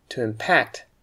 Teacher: when we use it as a verb you will need to stress the second syllable